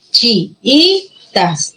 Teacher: Entre las dos i's, ¿qué i es la que lleva la mayor fuerza de voz? La segunda.